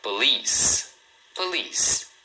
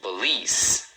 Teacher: Então, a primeira sílaba é bem rapidinho, é mais suave. Um detalhe aqui é o seguinte, cuidado porque muita gente fala policy, acaba lendo as letras.